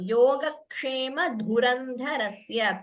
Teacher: please note the Mahapranas here. Dhu and dha, both are Mahapranas.